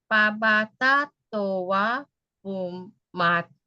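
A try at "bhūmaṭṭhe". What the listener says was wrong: Bumate. There is no N. No N here.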